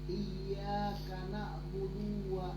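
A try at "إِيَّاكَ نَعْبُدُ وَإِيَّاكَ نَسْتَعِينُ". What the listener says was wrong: Pendek. Karena tarik ke A-nya. Langsung iyyaka na'budu wa iyyak.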